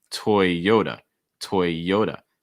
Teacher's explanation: stressing that second syllable the yo toyota notice that that t takes on a fast d sound · Notice that T takes on a fast D sound. So it's not T, it's usually more D.